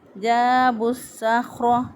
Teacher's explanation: یہاں پر لام کو صاد بنا کر صاد کو صاد کے اندر داخل کر دیا، شد والا حرف پیچھے والے زبر زیر پیش والے حرف کے ساتھ ملتا ہے، اس لیے صاد کو با کے ساتھ ملایا۔ · خا جو ہے اس کو موٹا پڑھیں گے لیکن خا پر آواز بند کریں گے، قلقلہ نہیں کریں گے۔ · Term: ادغام شمسی